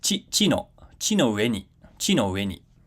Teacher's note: Okay, so chi no, we come down with chi no, and then ue ni is kind of treated as its own accent unit. Okay, so the accent actually restarts with ue, and it goes back up as we would expect, and then because it's final high pitch accent, it comes down before ni, chi no ue ni.